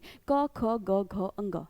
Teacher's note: यानी कि सारे के सारे व्यंजन में कंठ की आवाज आ रही है।